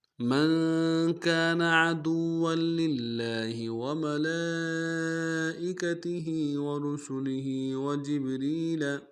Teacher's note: من كان میں میم کو نون ساکن کے ساتھ ملانا ہے، نون ساکن میں غنہ کریں گے۔ کانا میں کاف کے ساتھ الف مدہ ایک الف دام میں کھینچیں گے۔